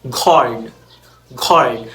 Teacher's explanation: we have the G retracted before back vowels